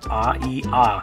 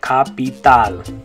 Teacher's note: Once again, notice the two A's in that word make different sounds in English, but in Spanish, they're both going to say ah.